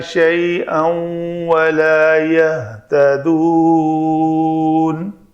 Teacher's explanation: شیئاً والا تنوین کے بعد واو ہے تو ادغام ہوگا